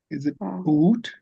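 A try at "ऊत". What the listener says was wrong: No, there's no virama there. Uta. Uta.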